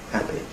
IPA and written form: ˈhæpi (happy)